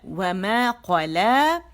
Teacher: و باریکی سے ادا ہوگا، دونوں ہونٹ گول ہوں گے، بیچ میں تھوڑا سا اسپیس، و مکمل گولائی اور تھوڑا سا بیچ میں وہ اسپیس ہوگا.